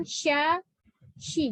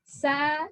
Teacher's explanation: Di sini lidahnya melekuk. Kalau yang sa kan enggak. Sa datar aja.